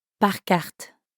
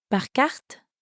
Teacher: just like in English, if it's a question, the person's voice will go up at the end.